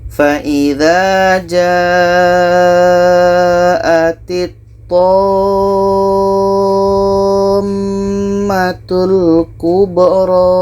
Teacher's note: Tammatul, kita panjangkan 6 harkat baru dengungkan 2 harkat. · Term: mad lazim kilmi mutsaqqal